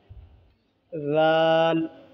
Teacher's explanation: ज़ुबान की नोक को ऊपर के दांत के किनारे पर लगाने से ज़ाल अदा होते हैं। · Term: ज़ाल का मखरज